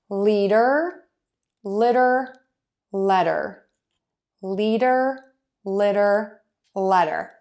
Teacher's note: to say that eh sound it's going to be a little more open than it is for the ih · so we have closed a little more open and then the most open